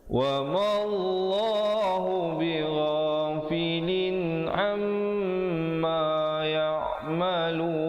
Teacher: Mim sabdu hukumnya wajibul gunnah, wajib dengung 2 harakat di situ.